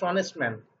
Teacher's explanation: he is dash অনেস্ট ম্যান, dash অনেস্ট ম্যান, এখানে এন এইস অনুচ্চারিত এইস, এই এইসটা এখানে উচ্চারিত হচ্ছে না